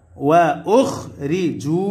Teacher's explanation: পেশের পরে ওয়াও সাকিন কিসের হরফ মাদের হরফ আর মাদের হরফ হইলে এক আলিফ টানিয়া পড়িতে হয় ইহাকে মাদ্দে তবাই বলে ফাল্লাযীনা হাজারু ওয়া উখরিজু পেশের পরে ওয়াও